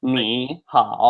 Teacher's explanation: So ni is a third tone and hao is a third tone as well. They're both third tone.